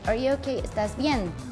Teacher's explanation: When you have the question mark, you just like raise the tone a little bit higher, like to imply that you're asking a question.